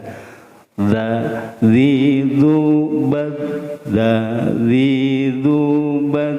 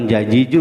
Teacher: nah nanti ada za itu di ujung lidah, nanti dengan ujung gigi seri atas, ujung lidah dengan ujung gigi seri atas.